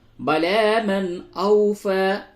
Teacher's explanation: نون ساکن کے بعد حمزہ ہے اس جگہ پہ اظہار ہوگا